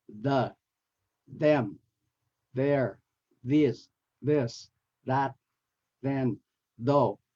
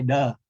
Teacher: And then the hard and soft TH, there are two kinds, the hard and the soft, but with both of them, you have to, the starting position is placing your tongue between your teeth, like this. And then the hard one, there's no air coming out, so it's non-aspirated